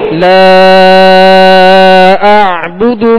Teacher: آخر میں عین کی جو ہے وہ آواز واضح کریں گے، اس کو جھٹکا نہیں پڑھیں گے بلکہ عین پڑھیں گے